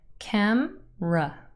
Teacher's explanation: camera has two syllables camra and the first syllable is stressed